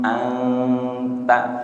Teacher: Samar itu ujung lidahnya tidak nempel.